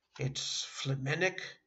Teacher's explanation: You stress the second syllable